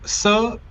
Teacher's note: The normal s it is dental. So let's say the tongue touches the teeth